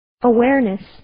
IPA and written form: ə'wernes (Awareness)